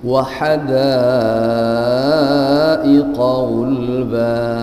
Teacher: setara bacanya dengan mad tabi'i, 2 harakat, tidak boleh lebih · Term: mad iwad